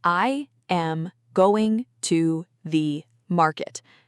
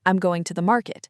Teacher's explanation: The words going and market are strong. The small words like two and the almost disappear. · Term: natural English rhythm